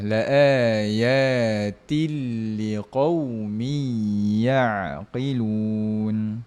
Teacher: Laayatil sentuh terus pada huruf lam without dengung. E tanpa ada dengung tuan puan. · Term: Idgham bila ghunnah, Idgham bila gunnah